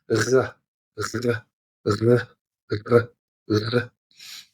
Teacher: What I'm doing there is I'm starting right at the back of my throat with almost like an H sound.